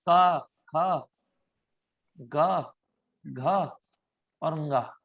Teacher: क का भी कंठ है, ख का भी कंठ है, ग का भी कंठ है